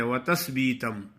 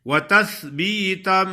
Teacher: اوپر والے سامنے والے جو دانت ہیں ان کے کناروں پہ زبان کی نوک لگاؤ تو سا ادا ہوتا ہے